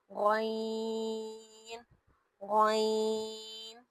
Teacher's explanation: یہ جو غین ہے یہ موٹا پڑھا جاتا ہے، اس میں ایک زوردار آواز باہر نکلتی ہے، زبان ہماری منہ کی طرف اٹھتی ہے، سیٹی کی آواز یا ہوا کے نکلنے کی آواز بھی محسوس ہوتی ہے۔